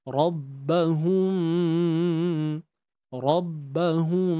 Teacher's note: mati jumpa ba hukum di sini Ikhfa Syafawi cara baca dia kita tutup bibir cuma tanpa tekanan yang kuat dan pastikan dengung dengan kadar dua harakat itu berlakulah pada hidung kita